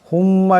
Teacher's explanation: মিমের উপর তসদিদ আছে এটাকে একি পরিমাণ গুন্না করিয়া পড়তে হবে